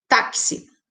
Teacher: Esse X com esse som de KS